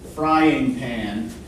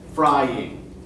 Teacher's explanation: So our voice goes up when we say fry, down when we say ing, and up again when we say pan, right? So fry and pan are stressed syllables.